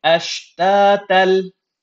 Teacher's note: I did not sound out the tanween sound or the noon sound of this tanween at all. I completely merged the ta فتحة tan and lam shadda with ashta ليروا. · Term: merging without nasalization